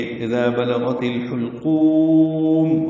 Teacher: حا وسط حلق سے ادا ہوگا، قاف پور پڑھیں گے اذا بلغت الحلقوم، اور قاف کو وقفاً لمبا کر دیں گے، میم ساکن پہ اظہار ہوگا۔